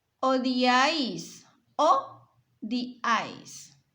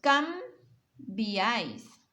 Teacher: son tres vocales que se juntan en una sola sílaba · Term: triptongo